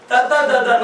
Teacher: ತ ದ ದ ನ ಅಂತ ಹೇಳಿ ನಾಲಿಗೆ ಹಲ್ಲಿಗೆ ತಾಕಬೇಕು